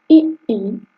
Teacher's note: इ ई जो है वो तालु से बोला जाता है और इसका वर्ग जो है वो है तालव्य अब है उ जो कि ओठों से बोला जाता है और यह जो है ओष् है।